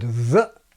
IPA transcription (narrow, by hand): ðəʔ